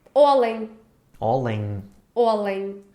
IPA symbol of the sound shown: ɲ